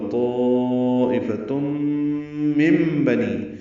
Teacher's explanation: نون ساکن کے بعد با آنے کی وجہ سے اقلاب ہے، نون کی جگہ میم پڑھیں گے · تم میں ادغام ناقص غنہ ہوگا